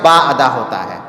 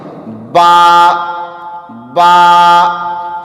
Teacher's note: با زبر کے ساتھ نہیں، الف کے ساتھ پڑھے با۔ تو با کا مخرج ہوا دونوں ہونٹ کے تری والا حصہ